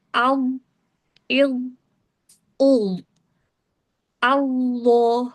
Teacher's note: ujung lidah dari arah permukaan atasnya bertemu dengan ujung gigi seri atas. Pangkal lidahnya terangkat. Sehingga untuk huruf ini dibaca tebal. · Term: huruf Dho